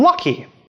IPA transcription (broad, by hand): lʌki